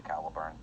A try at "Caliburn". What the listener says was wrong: Yet the way you say it sounds like bird. So you sure it's not a Cali bird?